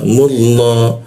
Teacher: Mu, nah mu bertemu lafaz Allah, lam bertasydidnya dibaca kara o dia, jadinya mullah ya, keluarnya o tapi bibirnya tetap a